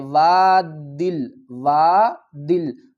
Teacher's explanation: آگے جزم آ رہی ہے تو ہم کیا کریں گے، دال کو لام سے ملائیں گے۔